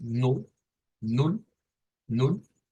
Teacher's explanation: Y es así. Miren, es con un sonido de U corta, con U. No es la U así larga, es la U corta